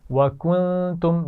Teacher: وَكُنْتُمْ نون ساکن پر غنہ ہے اور میم ساکن پر غنہ نہیں ہے کیونکہ اس کے بعد حمزہ ہے.